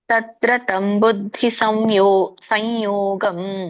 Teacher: ತತ್ರ ತಂ ಬುದ್ಧಿ ಸಂಯೋಗಂ. ನೋಡಿ ಇಲ್ಲಿ ಮುಂದೆ ಯ ಇರೋದ್ರಿಂದ ಅನುಸ್ವಾರ ಯನೇ ಬರುತ್ತೆ